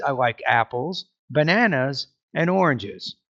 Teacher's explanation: make sure you have a rising tone when you get to the end. It's kind of like items in a series. · So with each statement, you have rising tone and have a really good pause